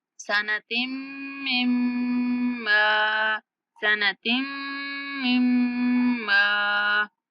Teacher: ता को मीम के साथ मिलाते हुए और फिर मीम को मीम के साथ मिलाते हुए गुन्ना करेंगे। गुन्ना का मतलब होता है नाक में आवाज को ठहरा कर पढ़ेंगे।